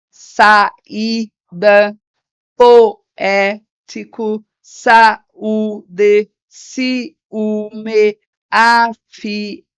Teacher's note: a gente tem vogal mais vogal e eles vão ficar sempre em sílabas diferentes